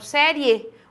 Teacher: Por exemplo, a palavra série. Veja que na hora de eu pronunciar, o I fica um pouquinho mais fraco. Eu falo série, o E se destaca. E aqui eu não separo, a sílaba ela tem que ficar assim, na separação em sílabas as duas ficam juntas. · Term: ditongo crescente oral